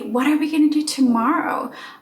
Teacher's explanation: having words reduced and sounds reduced to a schwa sound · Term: connected speech